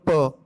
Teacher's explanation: जब आप प बोलते हो तो आपके दोनों लिप्स के क्या है? बंद हो जाते हैं, आ गई ना रुकावट, तो ये होता है कॉन्सोनेंट साउंड्स।